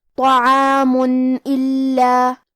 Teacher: الف حروف الاظہار میں سے ہے، اور اظہار کا معنی ہے ظاہر کرنا، اور کیونکہ تنوین کی اصلیت نون ساکن ہے تو ہم یہاں تنوین کو ظاہر کریں گے اور اسے نون ساکن پڑھیں گے اور بغیر غنہ سے یہ حکم کو ادا کریں گے۔